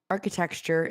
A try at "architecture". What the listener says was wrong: I don't think you're saying that word right. Architecture. You're saying it like texture.